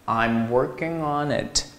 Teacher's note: 是 on, 是不是前鼻音结尾，辅音音标结尾，而后面是 it, 是元音标开头的，符合前辅后元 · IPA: /ɑn/ /ɪt/